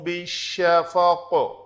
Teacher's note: تو فَلَا أُقْسِمُ بِالشَّفَقِ، ہم نے اس قاف کے اوپر بھی قلقلہ کیا، اس قاف کو متحرک تھا، ہم نے ساکن کر کے جب پڑھا تو اس کے اوپر بھی قلقلہ کیا۔ اگر ساکن نہیں کریں گے، ملا کر پڑھیں گے تو پھر قلقلہ نہیں ہوگا، پھر اس قاف کا اوپر جا کے قلقلہ ہوگا۔